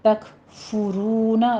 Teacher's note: فا کے اوپر ضمہ ہے، تک فارونا نہیں پڑھنا آپ نے، تک فرونا را مفخم پڑھی جائے گی، آگے واو مد ادا کریں گے، ہونٹوں کو گول کر لیجئے۔